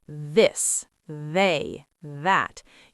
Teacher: Your tongue is touching your top teeth from the outside. The hard TH is the same physical position, tongue between teeth, but now you're using your voice too.